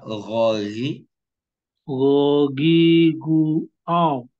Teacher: di ujung tenggorokan Ini udah dekat sekali dengan pangkal lidah